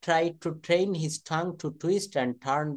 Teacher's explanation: ট এর জায়গায় ঠ বলতে হবে